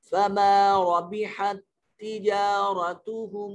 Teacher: یہاں دو تا اکٹھے ہو گئے، پہلا تا ساکن ہے، دوسرے تا کے نیچے زیر ہے، تو پہلے والے کو چھوڑ دیں گے، ہا کو دوسرے تا کے ساتھ ملا کر پڑھیں گے۔